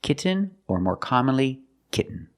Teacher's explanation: But don't say kitten. I cannot pronounce these T's as a fast D. I cannot say kitten. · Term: stop T